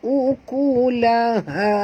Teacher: Okey, ha di sini ha simpul. Jadi bila ha simpul ni tuan-puan, kena baca daripada dalam, keluar pada dalam halkum.